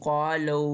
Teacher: हमने 3 अलिफ जितना लंबा खींचना है, क्योंकि इसके ऊपर बारीक मद है